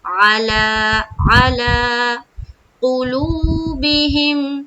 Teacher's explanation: گے علی قلوبہم، علی قلوبہم، علی میں عین نکالنا ہے اور لام کھڑا زبر لا یعنی کہ الف مدہ کے برابر کھینچنا ہے